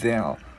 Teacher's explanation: chữ d các bạn đưa lưỡi qua giữa hai răng luôn